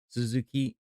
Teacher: You know, in Japanese, when you say Suzuki, it's not Suzuki, it's Suzuki. The stress is on the last syllable.